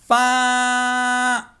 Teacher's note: فا کا مخرج ہے اوپر کے جو دانتوں کے کنارے ہیں وہ نیچے والے ہونٹ کے جو گیلے حصے، ڈرائی والا حصہ نہیں، جو گیلا حصہ ہے وہاں پر جب یہ دونوں دانت ٹچ ہوگے تو فا ادا ہوگا.